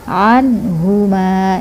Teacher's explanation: ha-nya di dada ainnya ditenggurukan dalam